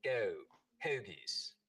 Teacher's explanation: the goat diphthong starts to move forward in the mouth